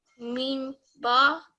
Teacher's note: and you notice your lips, meme and ba come from the same point of your lips